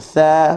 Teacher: hujung lidah dengan hujung gigi atas, dan kita sebut tha, buka mulut sambil nak senyum, huruf yang ringan. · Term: huruf tha